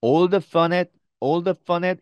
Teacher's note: 여기서 사실은 fun하고 at 하고가 연결됩니다. 그래서 all the fun at 이렇게 발음이 됩니다.